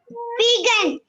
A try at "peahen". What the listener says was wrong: Peahen, not gen. Peahen. Peahen.